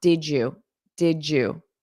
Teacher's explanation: So this DY sound combination, when you say it quickly, it creates a j, just like my name. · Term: j sound, J sound